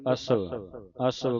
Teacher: ਅਸਵ ਪੋਲਾ ਬੋਲਣਾ ਅੱਧੇ ਵਾਵੇ ਦੀ ਆਵਾਜ਼ ਕੱਢਨੀ ਹੈ